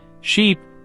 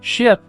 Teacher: the difference between sheep and ship is a tiny shift in tongue tension and height